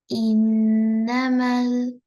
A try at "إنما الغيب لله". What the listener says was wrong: إنما الغيب لله. إنما الغيب لله. Don't lengthen. إنما